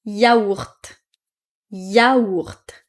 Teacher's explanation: en général, on va prononcer le T à la fin de yaourt